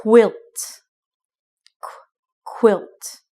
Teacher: when you say the qu sound it is unvoiced so it does not vibrate